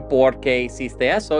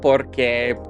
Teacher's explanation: the accent is removed, so the stress falls on that O in por instead of on the second syllable